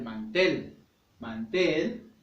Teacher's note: la sílaba tónica tel por lo tanto va a ser una palabra aguda porque está en la última sílaba